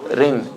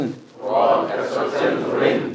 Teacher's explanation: Rin with a tiny bit of a roll.